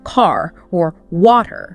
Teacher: lots of British accents tend to drop the R sound at the end of words like car or water